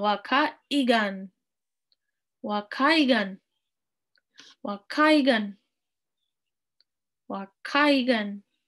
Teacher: House, waka, and we got a glottal stop here.